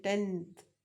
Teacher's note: So here n becomes dental n, tenth.